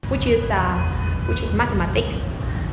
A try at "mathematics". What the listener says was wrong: mathematics, okay, nhấn lên nữa đi, nói stress hơn nhiều à.